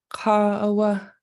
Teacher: For Southern, the word ka for man will actually be a falling long tone. So it will go high and then come back down. · Where you'll see variation is in the word ka for man. And so in Northern Coastal Tlingit, as you hear it in Juneau, for it is a man, it's long and high.